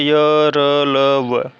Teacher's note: अंतस्थ व्यंजन जीवा का पूरा स्पर्श मुख के किसी भाग के साथ नहीं होता, मतलब जीभ का जो है वह मुख के किसी भाग को ना छुए, वो क्या कहलाता है?